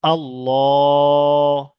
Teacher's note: লামের উপরে খাড়া জাবার আছে, তাই একালি পরিমাণ টান দিয়ে পড়ছি আল্লাহ